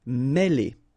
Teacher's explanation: Okay, remember, accent circumflex here on the top of E, and it will give you the sound E, really opened